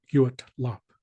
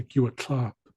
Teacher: So they're actually breaking apart the T and the L.